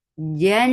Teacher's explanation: there is gunna, akmal gunna, keeping the sound in your nose for a longer time.